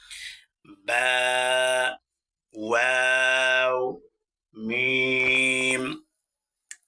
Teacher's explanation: ঠোঁটের মাঝখান হতে এই 3টি হরফ উচ্চারিত হয়।